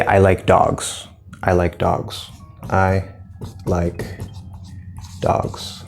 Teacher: we're actually going to drop off the cliff at the very end because this is a statement. That tells you that I'm done with my sentence. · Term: intonation